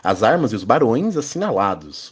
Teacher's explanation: O verso heróico é um tipo de verso em que decassílabo com a tônica na sexta e na décima sílabas